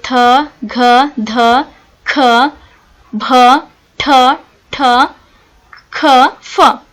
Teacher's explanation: ಮಹಾಪ್ರಾಣ ಅಂತ ಅಂದ್ರೆ ಹೆಚ್ಚು ಉಸಿರಿನಿಂದ ಹೆಚ್ಚು ಉಸಿರನ್ನು ತೆಗೆದುಕೊಳ್ಳುವ ಒಂದು ಅಕ್ಷರಗಳು